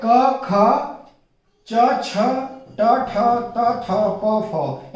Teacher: अघोष मतलब इनको बोलते समय नाद उत्पन्न नहीं होता, ठीक है। एक कंपन जो हमारे कहते हैं कि जो हमारा ध्वनि तंत्र है, ठीक है, उसके अंदर कंपन जो उत्पन्न होता है वो कंपन उत्पन्न नहीं होता, वो नाद उत्पन्न नहीं होता इन अक्षरों को बोलते समय, इसलिए इनको अघोष कहा जाता है, ठीक है।